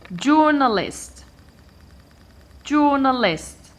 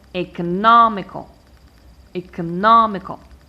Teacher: I stress the third syllable counting from the end